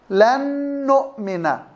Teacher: لاحظي النون الأولى، طبعا الغنة صفة ملازمة للنون والميم، الغنة صفة ملازمة للنون والميم، فلما تضغم النون في النون بتصير نون مشددة، والغنة في النون المشددة تكون مرتبتها عالية، أعلى مراتب الغنة إذا جاءت النون مشددة وإذا جاءت الميم مشددة، يعني إضغام بغنة.